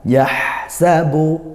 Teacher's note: ha sukun dia di alirkan nafas dan suaranya yah alirannya lepas bukan aliran yang sedang seperti mim ro lam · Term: hams